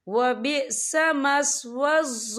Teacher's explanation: या देखिए व बिअस मस्वज़्ज़ा, ज़ा के ऊपर खड़ी हरकत है, तो हम इसे 2 या 3 हरकत के बराबर खींच के पढ़ेंगे।